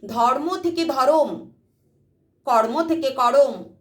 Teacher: যুক্ত ব্যঞ্জন, মাঝখানে একটা স্বরধ্বনি আসছে, মাঝখানে স্বরধ্বনি আসছে, তাই মধ্য স্বরাগম।